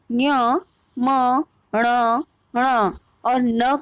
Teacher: इसलिए लिखा है यहाँ पर न्यमंगना नाम नासिका, अर्थात न्य, म, ण, ण और न का उच्चारण स्थान नासिका है